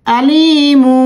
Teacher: নুন সাকিন বা তানভীন এর পর বা অক্ষর আসে সেখানে আমরা নুন সাকিন বা তানভীন কে মিম দ্বারা পরিবর্তন করে গুন্না সহকারে পড়বো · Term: ইকলাব